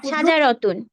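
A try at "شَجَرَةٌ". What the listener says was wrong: মাশাল্লাহ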